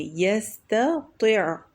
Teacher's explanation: ایک تو تا ہے جو ترقیق ہے، فوراً بعد تو ہے جو تفخیم ہے، تو اس کو فرق کر کے پڑھیں گے